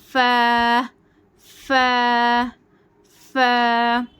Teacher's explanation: फा फ नहीं पढ़ना इसको फा बारीक पढ़ना है